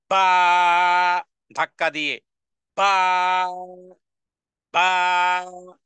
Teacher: বা দুই ঠোঁট বন্ধ রেখে দুই হারাকা পরিমাণ টেনে বলতে হবে